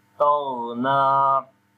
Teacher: On the ghain we read again heavy sound, and also we make a rakhawa quality, like continuation of sound. We say taghna.